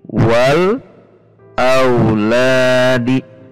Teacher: Anda bisa perhatikan, di sini ada huruf alif, kemudian huruf lam, dan alif lam ini dibaca dan tidak dimasukkan ke huruf yang ada di depannya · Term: Alif Lam Qomariyah